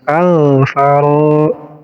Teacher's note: Ro dibaca panjang 2 harokat karena menjadi mad tabi'i. Huruf mad tabi'inya alif, karena alif sukun sebelumnya baris fathah.